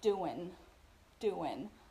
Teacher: Doing, the ing gerund in this case, doing, is reduced. So we basically eliminate that G sound and you just hear doing, doing.